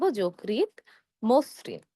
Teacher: শুরুতে রয়েছে জ, জ হলো অধ্বনি। অধ্বনি এর পরে রিকার থাকার কারণে আমাদের অধ্বনি এর সংহৃত উচ্চারণ হবে। আমরা ওকার দিয়ে উচ্চারণ করব যকৃৎ, মসৃণ।